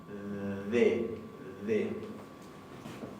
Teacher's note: Y la siguiente, que se llama ED, es la suavecita interdental. D. Entonces la primera es la versión oclusiva, la segunda es la versión fricativa.